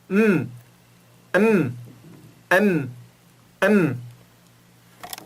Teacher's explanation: Agora, o outro caso quando é uma letra sem vogal. Os lábios começam separados e depois se fecham.